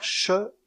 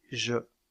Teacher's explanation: La consonne che est sourde et la consonne je est sonore. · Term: constives prépalatales